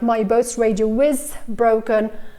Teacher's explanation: Also here, my boat's radio is broken, I would insert the W sound.